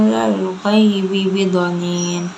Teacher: Huwa 'alal ghaibi, 'alal gha itu alif lam qamariyah karena alif lam bertemu dengan gha. Ghaibi itu mad layyin karena ya sukun sebelumnya harokatnya fathah